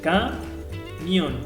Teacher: Veo que la sílaba tónica está en mión y está formado por un diptongo.